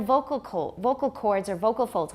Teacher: we use that so much that has already taken on compound stress